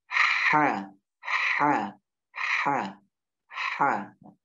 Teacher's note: Ha bagian tengah tenggorokan berdekatan dengan huruf ain.